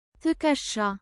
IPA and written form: tikəsha (ትከሻ)